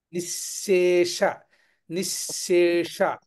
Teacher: అది తాలవ్యకారం నిశేష నిశేష అది నిజానికి కొంచెం ప్రాక్టీస్ చేయవలసినటువంటి సందర్భం ఎందుకంటే తాలవ్య శకారం అవ్వగానే వెంటనే మూర్ధన్య శకారం కలుస్తుంది అక్కడ అందుచేత తాలవ్య మూర్ధన్య శకార శకారములను వెనువెంటనే పలకడం అనేది కొంచెం అభ్యాసం చేయాలి